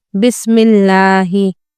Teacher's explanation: لفظ اللہ کا لام باریک یعنی لائٹ پڑھا جائے گا